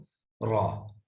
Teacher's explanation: طرف اللسان جب ثنایا اور رباعی کے مسوڑوں کو لگے گا تو را